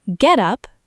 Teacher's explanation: Get up, noun, stress on get, equals outfit, clothes.